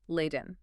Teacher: They are now heavily, almost aggressively pronouncing the hard T, emphasizing Leiden.